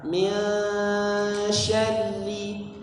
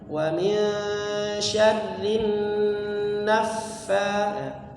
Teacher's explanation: Jadi setiap dengung-dengungnya dipanjangkan 3 harakat